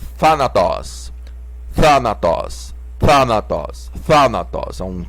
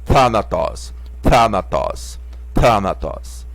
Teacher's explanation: Aqui é um theta soprado, né? Um T soprado.